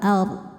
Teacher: Wal ard, huruf ra sukun dibaca tafkhim karena didahului harokat fathah, dibacanya tebal ard. Dan dod disukunkan, huruf sebelumnya sukun, dod harus tetap terbaca